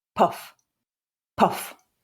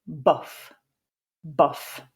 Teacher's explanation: if you put your hand close to your lips as you say the word puff, you'll feel a puff of air